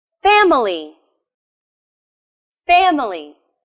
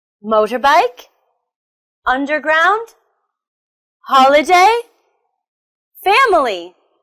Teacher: They're all 3-syllable words with the stress on the first syllable.